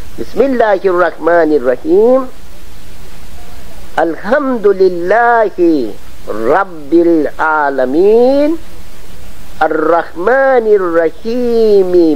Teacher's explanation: رے کے اوپر جو تشدید ہے اس کا 2 مرتبہ ضرور تلفظ ہونا چاہیے عربی میں